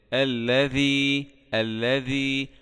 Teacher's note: ونخلي بالنا من اخراج طرف اللسان مع اطراف السنتين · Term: حرف الذال